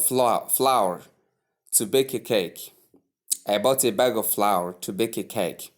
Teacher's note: flour has a diphthong, that is ow sound.